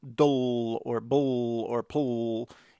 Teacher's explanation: the L is actually acting as a vowel